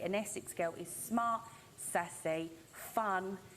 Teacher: using that vocalized dark L on girls